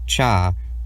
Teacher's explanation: the voiceless post-alveolar affricate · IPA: /tʃ/